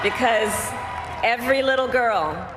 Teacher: Because, very reduced, because that's not important, so we practically don't hear any vowels here.